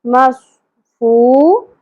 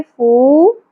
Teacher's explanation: واو حرف مدہ ایک الف کے برابر کھینچیں گے